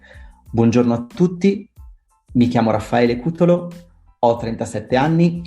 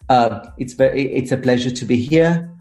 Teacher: they kind of have an ascending tone at the end of the sentence